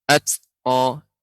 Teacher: ketika disukunkan maka ada hamesnya